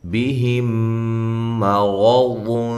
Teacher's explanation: یہ را اور ضاد کو موٹا پڑھنا ہے، میم کو باریک